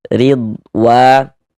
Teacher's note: Maka huruf ro kita baca tarkik, kita baca tipis. · Di sini ada huruf roh memiliki harokat kasroh, ini tanda baca kasroh, maka huruf roh kita baca tarkik, kita baca tipis.